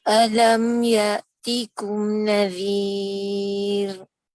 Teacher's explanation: diangkat hujung lidah, itu kerana nak sebut untuk makhraj ra. Tapi bahagian tengah dan pangkal lidah ini semuanya flat, duduk tenang-tenang je, tak diangkat dan tak ada lekukan dan dia tenang relax je. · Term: nipis